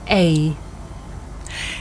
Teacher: this is a diphthong a double vowel sound the shape the mouth makes changes from the beginning of the sounds to the end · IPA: /ai/